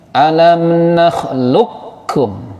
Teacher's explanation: Qaf sukun bertemu kaf, qafnya hilang jadi kaf. Qalqalahnya hilang juga. Qaf itu kan qalqalah. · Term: idgham mutaqaribain